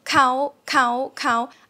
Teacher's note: So high tone is you go a little higher and then even higher.